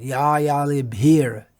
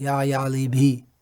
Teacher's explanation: So we may just leave out that r sound, but it's better to try to pronounce it. Ya yalibhir, not ya yalibhi.